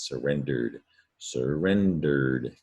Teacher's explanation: And an ed to the verb surrender, you have the past tense verb surrendered, but you don't hear ed, you just hear a d